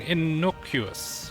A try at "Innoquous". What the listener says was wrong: Innoquous. You had more of an innocuous, I think, when you said it.